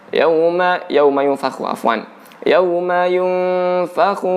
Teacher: Yunfikhu, di sini ada dengung, ada samar-samar ya.